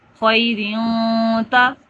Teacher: نون کی آواز کو ناک میں لے جائیں گے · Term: گنہ